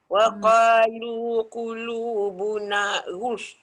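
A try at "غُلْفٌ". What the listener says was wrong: boleh tak jangan sebut fa dulu sebab saya nak betulkan lam dulu. Ghul. Ghul. Tu lam tu dah bulat, lam ghul baru tolak fa. Tapi nanti praktis banyak kali bagi dia jelas betul lam tu baru masuk fa. Wolf. Wolf. Ruang dia besar. Wolf.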